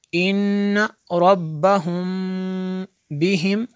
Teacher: मीम साकिन के बाद बा आ जाए तो यहाँ पे इख्फा शफ़वी होगा।